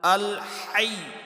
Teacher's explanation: حمزہ کو لام کے ساتھ ملاتے ہوئے کلکلا نہیں کرنا، یعنی کہ آواز کو وائبریٹ نہیں کرنا